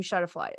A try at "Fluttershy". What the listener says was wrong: I love how you're saying her name backwards. Shutterfly. Fluttershy.